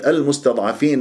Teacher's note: ولما تكون اللام قمريه انت تعطيها جريان للصوت فتره زمنيه بسيطه